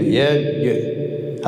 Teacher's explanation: اول صدا قطع شو بعد قلقله کنیم